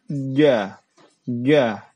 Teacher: kalau jim ini itu ditempelkan tengah lidah kita ke langit-langit.